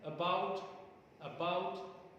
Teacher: I mean, is not heard as loudly as bout is heard. So, the greater prominence is given on bout or around. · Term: stress